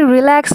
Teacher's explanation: প্রথমে রিটা অনেক রিল্যাক্সে উচ্চারণ হচ্ছে, অর্থাৎ এখানে তেমন একটা চাপ পড়ছে না।